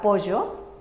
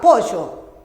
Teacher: Ese es el yeísmo, confusión de la L por la Y.